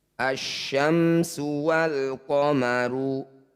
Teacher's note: lamnya abaikan langsung baca pada tanda tasdid asyamsu Wal qomaru Alif diikuti lam sukun disebut bacaan zhar Qariah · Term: Idam Syamsiah